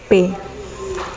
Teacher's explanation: Artikulator aktifnya bibir bawah, artikulator pasifnya bibir atas. Jadi bersentuhan langsung